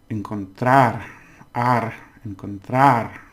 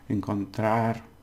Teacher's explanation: So encontrar, we stress it at the end